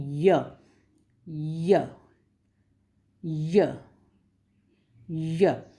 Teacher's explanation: य को बोलने पर जीभ का जो फ्रंट वाला भाग है वो हार्ड पैलेट को टच करता है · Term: पैलेटल